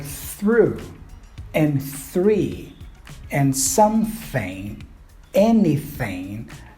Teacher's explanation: Here's voiceless. So the tip of your tongue is between your upper and bottom teeth, and then you just push air out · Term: voiceless TH